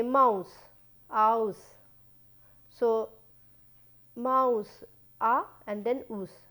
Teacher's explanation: these are two different vowels coming together, they are not one single vowel